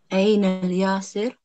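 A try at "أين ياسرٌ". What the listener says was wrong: So Aina Yasirun. I'm going to be strict with you guys when it comes to pronouncing the last verb, or the last vowel, sorry.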